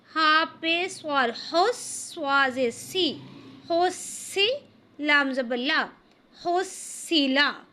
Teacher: ہا کو حلق سے نکالیں گے، سواد کو موٹا کریں گے اور لام کو باریک پڑھیں گے، لیکن لمبا کسی کو بھی نہیں کریں گے کیونکہ یہ تمام حروف حرکات ہیں۔ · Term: حروف مشدد